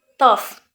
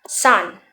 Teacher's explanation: suara yang dihasilkan itu dengan lidah menekan pada tonjolan alveolar atau di belakang gigi depan bagian atas